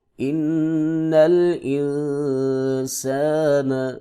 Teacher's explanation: نون مشدد ہے غنہ ہوگا، نون ساکن ہے اخفا ہوگا، سین کی سیٹی ہے ، الف سے پہلے زبر ہے، یہاں پہ مدہ ہوگا، لام